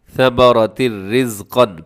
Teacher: ہو رہا ہے، تنوین کے بعد حروف یرملون کا را ہے، ثمرتن آپ نے نہیں پڑھنا بلکہ نون کی آواز یہاں بالکل ختم ہو جائے گی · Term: ادغام